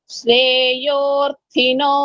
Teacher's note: థ అంటే మహా ప్రాణము